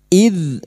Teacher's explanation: huruf dzal sukun jangan dipantulkan ya, bukan qalqalah. Huruf dzal, id, ud, huruf dzal memiliki sifat jahr dan rakhawah, tertahannya nafas dan mengalirnya suara.